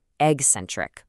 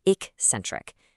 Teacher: So many people say eccentric, putting in a hard g sound that isn't really there. The correct pronunciation actually starts with more of a K sound.